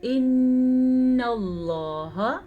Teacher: نون پہ رک جانا، ناک میں آواز کا چلا جانا، اسے غنہ کہتے ہیں. لفظ اللہ کو پر پڑھیں گے کیونکہ لفظ اللہ سے پیچھے حرف پہ زبر ہے.